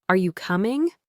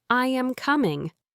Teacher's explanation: How your voice goes up and down is the rise and fall of your voice. Think about how your voice goes up at the end of a question like are you coming or how it falls at the end of a statement like I am coming.